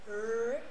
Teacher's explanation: When I say R, there is no rolling of the R.